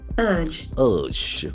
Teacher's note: we can observe that the middle R is silent